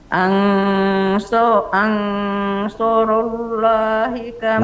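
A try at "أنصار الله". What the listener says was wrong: Masih tebalin sedikit. Ansarallah. Ansarallah.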